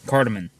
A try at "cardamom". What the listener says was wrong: Not man. Mom. M O M.